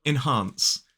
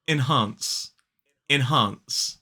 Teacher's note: two syllables the stress is on the second syllable